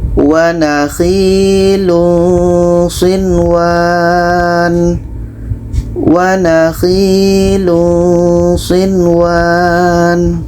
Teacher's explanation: Nun jelas, waw jelas, tidak ada dengung. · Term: izhar wajib